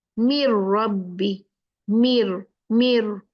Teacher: लाम और रा के साथ में बगैर गुन्ना के इगाम होता बिल्कुल कंपलीटली मुद हो जाता है · बिल्कुल कंप्लीटली मुदगम हो जाता है नून विद रा और लाम। मिर रब्बी, मिर, मिर है ना, रा नून गायब हो गया। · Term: बगैर गुन्ना के इदगाम